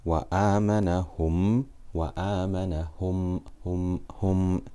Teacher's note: It is when we completely insert the meme into the next letter and read it as one letter. So whenever a meme sakina is followed by another meme, both will be merged together with ghunna for 2 harakat. So whenever we have a meme sakina and that's followed by another meme, we will just read them as one letter with ghunna for 2 harakat. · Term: Idram Shafawi